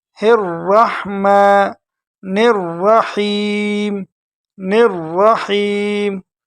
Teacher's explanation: را کو موٹا کر کے پڑھیں گے اور نون کو ڈائریکٹ ملائیں گے را کے ساتھ۔ یہ جو بیچ میں آپ کو الف لام نظر آ رہا ہے یہ بالکل حذف ہو جائے گا، نون ڈائریکٹ را کے ساتھ مل جائے گا۔